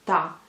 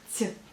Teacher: La première lettre elle est bien dure, donc ta, et la deuxième, donc sur la deuxième syllabe, vous voyez le signe mou, donc ti.